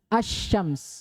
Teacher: Al alsamsu tapi karena Alif lamnya Syamsiyah hukumnya akan datang bahwa al-nya itu gak dibaca diidgom dileburkan kepada huruf setelahnya maka dibaca asyams